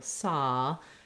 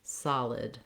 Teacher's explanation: making sure you have a nice length on your first syllable, saw, and then short on your second syllable, lid, solid. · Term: first syllable stress